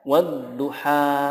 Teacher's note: h-nya dipanjangkan karena di sana ada Fatah bertemu Alif tapi alifnya alif bengkok bukan Alif Lurus